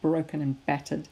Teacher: So you've got quite plosive alliteration, broken and battered. It's quite emphatic ending on those two hard B sounds.